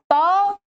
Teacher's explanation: ये दंत वर्ण क्या वर्ण है ये दंत वर्ण है ध्यान रखेंगे दंत वर्ण त थ आप देखें दांत से जिवा लगती है